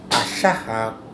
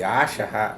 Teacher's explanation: porque una inicia por una vocal corta y la otra inicia por una vocal larga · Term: vocales cortas y vocales largas